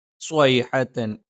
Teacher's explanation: സ്വ ഉച്ചരിക്കുന്ന സമയത്ത് ആ നാവിന്റെ മധ്യഭാഗം മുകളിൽ സ്പർശിക്കില്ല